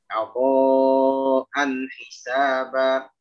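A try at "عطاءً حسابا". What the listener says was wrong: Antum masih terpengaruh dengan huruf tebal yang datang setelah ain.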